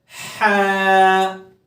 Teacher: ہا کو جیسا کہ حروف حلقی میں بتایا تھا کہ حلق کے درمیانے حصے سے پڑھا جاتا ہے، حلق کے سینٹر والے حصے سے پڑھا جاتا ہے، اور اس کو پڑھتے ہوئے ٹھنڈی سی سانس جو ہے باہر نکلتی ہے منہ سے، ٹھیک ہے، اور منہ کھول کر پڑھا جاتا ہے اس کو، تو اس کو پڑھیں گے ہا۔